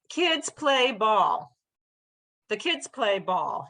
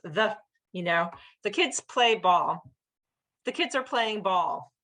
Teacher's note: The other words in between are super-short and it's just those emphasized words that are long